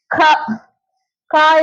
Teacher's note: க கா என்ற எழுத்து எப்படி உருவாகுது? நாக்கின் முதற் பகுதி மேல் அன்னத்தை ஒட்டும் போது பிறக்கின்றது